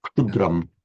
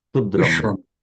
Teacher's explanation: So try and put a k immediately followed by a shta, as if it's all one sound. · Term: ksha